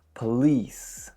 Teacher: Of course, the second syllable is what gets a majority of the stress.